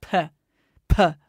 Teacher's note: And all you have to do is say, okay, do you know when you make a pee, it's with both lips? Bilabial. It's a bilabial plosive. So let's try bringing those lips together.